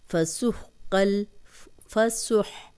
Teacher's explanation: فسحقل، فسح، ہا کی آواز آنی چاہیے، ہا پہ جزم ہے